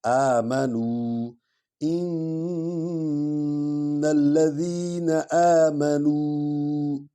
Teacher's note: الذین نون کو لام میں شامل کریں گے، اس کو ملائیں گے، جوائنٹ کریں گے